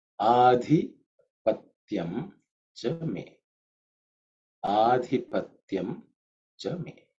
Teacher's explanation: the second letter is dhi. It's an aspirated one. Mahaprana, which is the fourth letter in the Tavarga. So it has to pronounce as dhi.